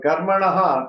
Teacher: the Visarga is to follow the pronunciation of the previous vowel